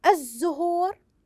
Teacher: لام شمسيه تكتب ولكن لا تنطق